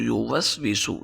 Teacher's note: آگے وہ یوسوسو، یہاں پر بھی وہ پر ہونٹوں کو گول کریں گے، سین پر سیٹی نکالیں گے